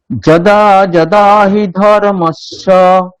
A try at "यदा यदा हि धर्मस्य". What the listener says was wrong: বর্গীয় জয় নেই ওখানে।